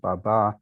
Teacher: What makes the Turkish source of these words in Albanian and Romanian, Greek, and so forth likely is, for one thing, the accent. So it's in Turkish, it's accented on the second syllable, baba, and so also in Albanian, Romanian, and Greek.